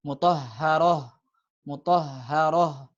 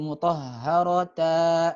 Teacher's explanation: maka kalau ta marbutoh kalau waqaf ya dibacanya seperti ha saja biasa ya. Seperti ha biasanya.